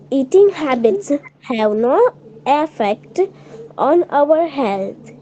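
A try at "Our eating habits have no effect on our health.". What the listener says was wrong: our eating habits have no effect, not affect. It is not a double F. It is effect.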